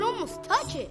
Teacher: he linked touch with the word it resulting in this completely linked phrase